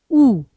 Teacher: उसी प्रकार देखिए उ किस प्रकार का स्वर है उ। अब एक तो यह संवृत स्वर है। मुंह बिल्कुल कम खुला है। फिर ये आपका वृत्त मुखी स्वर है।